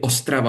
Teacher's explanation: the stress falls upon the first syllable